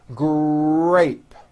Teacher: in the word grape the r sound is stronger and you even hear it more than the G sound